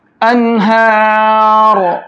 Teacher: را کو موٹا کر کے پڑھیں گے